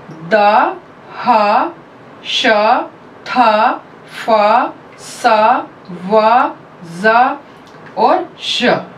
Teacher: Soft palate के उठे हुए होने की वजह से नेजल पैसेज हमारा क्लोज्ड होता है। The air escapes through the narrow gap producing friction। जो हमारी उस समय हवा एस्केप होती है, एयर एस्केप होती है, वो बहुत ही नैरो गैप में से एस्केप हो रही होती है, इसीलिए उसमें फ्रिक्शन होती है। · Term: fricatives